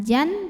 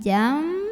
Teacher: maka bunyi nun sukun diganti dengan bunyi mim sukun. Jadi bukan jan tapi jam disertai bunyi dengungan. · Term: hukum iqlab